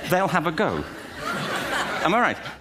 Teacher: the consonant m is followed by the voiced vowel sound I the M sound is assimilated and this causes Mi to sound like my in some instances